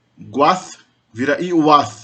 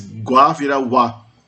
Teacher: Observa aí que o G, nesse caso, desaparece. Gua vira wa. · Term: lenição